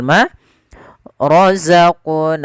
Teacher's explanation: Jadi ketika membaca huruf qaf ini, huruf qfnya harus mantul. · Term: qalqalah